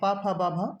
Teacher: ये ओष्ठ से बोले जाते हैं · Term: ओष्ठ वर्ण